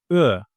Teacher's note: Ö is a front vowel and a rounded one, Ö. While I'm articulating this vowel, I use the front part of my mouth and my mouth takes a round shape, Ö.